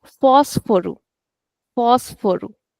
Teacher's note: So only phos is extended. Rest of it is small.